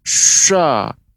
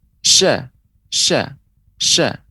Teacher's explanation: ucapan huruf Syah tidak boleh tebal seperti misalnya pengucapan yang keliru sah-sah ia dia baca dengan tebal